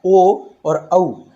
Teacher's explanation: इसके बाद आता है ओ दौतो, ओ दौतो कंठोष्ठम, अर्थात ओ और औ, इनका जो उच्चारण स्थान है वो कंठ और औष्ठ है, कंठोष्ठ। क्योंकि आ और ऊ को मिलाने से ओ और औ बनता है। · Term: कंठोष्ठ्य वर्ण